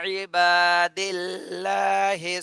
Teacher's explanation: আল্লাহ শব্দের ডানে জের আসছে এজন্য আল্লাহ শব্দ চিকন করে পড়তে হবে